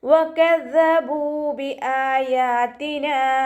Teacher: ദാല് ലൈറ്റാക്കിയിട്ട് ഉച്ചരിക്കാൻ ശ്രദ്ധിക്കുക. ദാലിൻ്റെ മഖ്റജ് നമ്മുടെ നാവിൻ്റെ അറ്റവും മേലെ മുൻപല്ലിൻ്റെ അറ്റവും ചേർന്നിട്ടാണ് പുറപ്പെടുന്നത്.